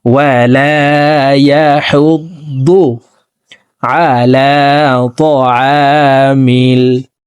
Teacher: দদকে মোটা করে উচ্চারণ করতে হবে, দালের উচ্চারণ করা যাবে না। ওয়ালা ইয়াহুদ্দু পড়া যাবে না।